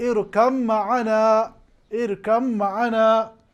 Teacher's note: یعنی با کا ادغام میم کے ساتھ